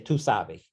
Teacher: Brazilians don't aspirate that S at the end of sabes